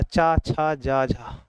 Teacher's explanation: तो तालब में आपका चा वर्ग आता है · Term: तालब ध्वनि